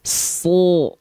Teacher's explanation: Enggak so, tapi so. Kita cuma buka mulut saja. So. Kenapa bisa? Karena ada sifat pangkal lidah yang diangkat. Atau pangkal lidah naik. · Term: huruf tebal